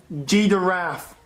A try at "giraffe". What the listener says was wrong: No, there's no D in giraffe. No, giraffe.